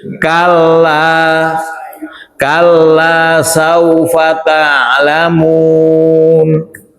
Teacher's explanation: Kala panjang dua harakat, maka ini adalah mad asli atau mad thobi'i.